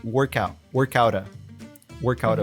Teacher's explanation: the T in out becomes a flap T, the American T, which connects with the short A, the article A.